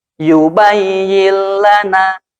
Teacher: Nun mati menghadapi la. Langsung dimasukkan ke huruf lam tanpa ditahan. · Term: idgham bila guna